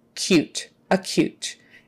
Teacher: with a k-y-u sound like cute not coot cute acute and the stress is on the second half